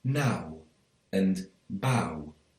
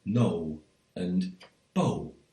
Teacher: it's more likely to be pronounced like ow, so you get now and bow rather than no and bow